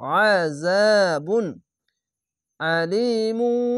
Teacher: আইনটিকে মোটা করে গলা চিপে পড়বেন